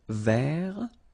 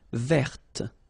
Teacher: So masculine form, don't pronounce the final T.